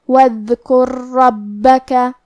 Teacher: ہم پہلا را کو دوسرے را میں ملا کے ایک ہی را اور تشدید کے ساتھ پڑھیں گے، وَاذْكُر رَّبَّكَ۔ · یہاں الف ہے لیکن یہ حمزۃ وصل ہے، ہم حمزہ کو ظاہر نہیں کریں گے، واو کے بعد حرف دال کو پڑھیں گے کیونکہ یہاں دال ساکن ہے تو ہمیں دال کو ظاہر کرنا ہے۔ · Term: ادغام